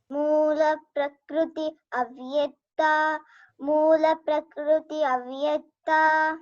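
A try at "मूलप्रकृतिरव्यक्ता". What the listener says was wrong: There little ra sound comes. Can you see R there?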